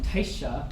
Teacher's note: taisha, which starts with an aspirated T